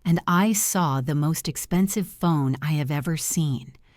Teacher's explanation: You slow down on most expensive phone because that is the point of the story.